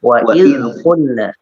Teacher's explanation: huruf zal jangan sampai dikolkolakan.